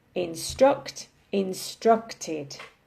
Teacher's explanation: instruct in the present simple and in the past simple instructed so we're still stressing the second syllable it's just that in the past simple we have an additional syllable sound at the end